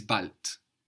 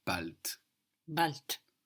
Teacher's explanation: A D on the end of the syllable in German is pronounced more like a T. So B-A-L-D, but what we hear is bald.